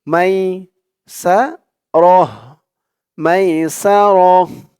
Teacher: হা উচ্চারণ করার কারণ হচ্ছে এখানে আমরা থামছি, এই তো চিহ্নতে আমরা অক্ফ করছি, অক্ফ করার কারণে এই গুল তাটা হা হয়ে গেছে